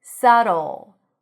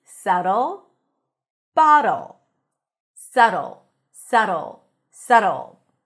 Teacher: There is no B, and the T sounds like a very short D. Listen, sa, like sun, sa, and then we have do.